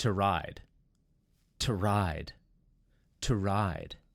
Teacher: notice it's not to ride the O kind of disappears